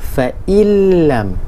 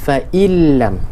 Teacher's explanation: menggabungkan juga bunyi nun dengan huruf selepasnya tanpa dengung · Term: idgham bila ghunnah